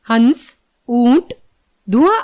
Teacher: अनुनासिक, इसके उच्चारण में वायु नाक एवं मुंह दोनों से निकलती है